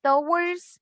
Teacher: the T doesn't have like a strong sound. It's not like a strong sound. It's a little bit explosion at the beginning.